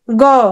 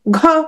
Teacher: ক অল্পপ্রাণ খ মহাপ্রাণ গ অল্পপ্রাণ ঘ মহাপ্রাণ